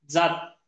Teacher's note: जनमत फक्त टाळूला लागायली जीभ, आणि हा जर आपण इकडे घेतला इथला बघितला जात, जीभ टाळू बरोबर दाताला पण स्पर्श करायली, म्हणून या ठिकाणी जात या शब्दातला ज दंत तालव्य, जनमत शब्दातला ज हा तालव्य वर्ण आहे.